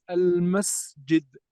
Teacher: مثلا حينما تقول المسجد، السين بعدها جيم، السين همس والجيم جهر، السين صفير، الجيم ليس صفير، الجيم شدة